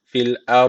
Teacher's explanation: Öncesindeki harf üstten bağlandığı için ra harfi burada kalın okunacak.